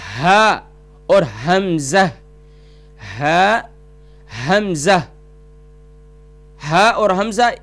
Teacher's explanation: ہا اور حمزہ یہ گلے کے نیچے والے حصے سے اقصائے حلق، یعنی گلے کے نیچے والے حصے سے جو سینے کی طرف ہے، سینے کی جانب ہے، وہاں سے یہ دو حروف ادا ہوتے ہیں.